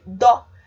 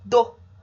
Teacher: O dó, percebam que ele é forte, a gente ouve o ó bem forte. Por isso, ele é considerado uma monossílaba tônica. O do, por outro lado, o som do o some.